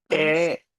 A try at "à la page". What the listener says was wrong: la, এ না মুসিও, আ la, à la page, হ্যাঁ